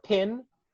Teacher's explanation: in pin the p is aspirated with a small puff of air